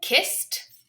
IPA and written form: kɪst (Kissed)